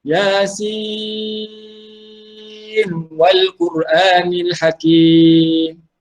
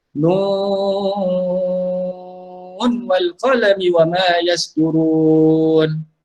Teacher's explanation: Baca dengan izhar dan 6 harakat. Okey, izhar ni maksudnya jelaskan huruf nun itulah.